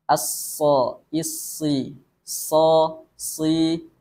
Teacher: dan bunyinya mengalir ketika kita membacakan huruf Shad kemudian istila atau terangkatnya Pangkal lidah sehingga huruf Shad Ini menghasilkan bunyi yang tebal